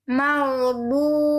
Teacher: di ujungnya hilangkan bunyi e-nya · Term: sukun